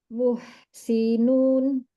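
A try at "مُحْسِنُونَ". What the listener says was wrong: Nah, kepanjangan.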